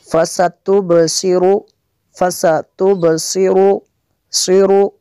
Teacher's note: صاد کو بھی پر کرنا ہے اور را کو بھی پر کرنا ہے